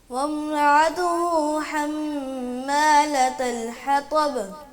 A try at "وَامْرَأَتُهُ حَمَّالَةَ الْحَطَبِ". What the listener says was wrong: وامرأته یہ حمزہ کی آواز ہے, عین نہیں ہے, اس کو عتو نہیں کہنا. وامرأته وامرأته.